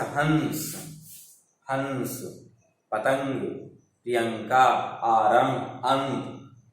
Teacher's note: इसका उच्चारण नाक से होता है, जैसे हंस, हंस, पतंग, प्रियंका, आरंभ, अंत, ये। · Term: अनुस्वार